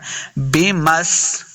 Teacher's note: بمس سین پہ سیٹی کی آواز آئے گی